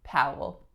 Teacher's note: it's out and then the second vowel is a schwa Powell this L at the end is not a light L but a dark L